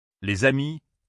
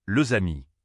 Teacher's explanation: Par exemple, les amis, le amis, on entend le Z. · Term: liaison